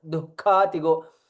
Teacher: Visarga followed by Kha. Kha is Mahaprana.